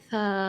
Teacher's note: थोड़ा खींच कर ही पढ़ना है यहां देख सकते हैं सा जब यह हर्फ की सूरत में पढ़ा जाएगा तो सा ऐसे जल्दी से नहीं पढ़ेंगे खींच कर पढ़ेंगे